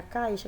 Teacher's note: começa com a mais forte, termina com a mais fraca, então ela é uma decrescente